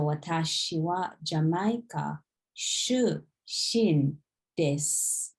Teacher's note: U in the des, we don't pronounce it.